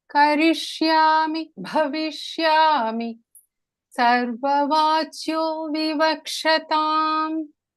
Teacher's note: The bha there is Mahapranah.